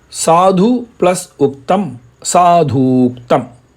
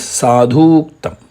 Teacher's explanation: U or U plus U or U becomes one single long vowel U. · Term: one long vowel